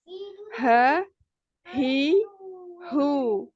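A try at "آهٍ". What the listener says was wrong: Jangan diputus ya. Nah, ketika di tasdid huruf H ini tidak terputus ya. Aha ya. Aha, ihi, uhu.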